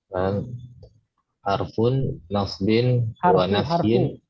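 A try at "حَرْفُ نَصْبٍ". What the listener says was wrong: Harfu. Nggak pakai nun. Harfu nasbin.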